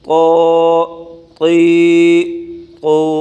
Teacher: تو کھڑی زبر تو، تو کو موٹا کر کے پڑھیں، تا نہ پڑھیں